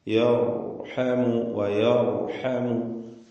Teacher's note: യർഹമുവിൽ റാഇനെ തഫ്ഖീം ചെയ്യുക, തടിപ്പിച്ച് റാഇനെ ഉച്ചരിക്കുക. സാക്കിനത്തായ റാ തൊട്ടു മുമ്പിൽ ഫത്ഹ.